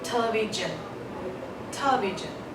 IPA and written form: ˈtelɪˌvɪʒən (television)